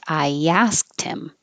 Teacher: Technically, asked ends with a T. So you can connect the T to him, get rid of the H. It's called H deletion. So it would really sound like I asked him.